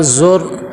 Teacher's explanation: پھر آگے زا کو را کے ساتھ ملائیں گے، زور، اور را دیکھیں را کو سبز رنگ دیا ہوا اس وجہ سے کہ یہ قاعدہ ہے کہ جس را کے اوپر جزم آ جائے اور پیچھے زبر یا پیش آ جائے اس را کو موٹا کر کے پر کر کے پڑھتے ہیں۔ تو یہاں پہ دیکھیں را کے اوپر جزم ہے اور پیچھے اس کے کیا ہے، پیش ہے، تو کیا کریں گے، اس کو موٹا کر کے پر کر کے پڑھیں گے۔